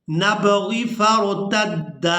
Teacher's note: दाल को अलिफ मद्दा की वजह से खींचकर अदा करेंगे।